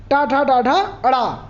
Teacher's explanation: पूरा टा वर्ग ये मूर्धन्य से बोले जाते हैं